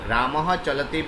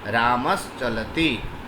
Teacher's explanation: Okay, so here if I say Ramaha and Chalati, in this case visarga will be converted to palatal sa